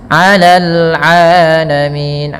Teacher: Faddaltukum 'alal 'alamin, mim mati bertemu ain, mimnya dijelaskan, ada lagi ketemu ain izhar syafawi, terus jelas 'alal 'alamin, mad tabi'i ya, ain jangan dibaca alamin, bedakan ain dengan hamzah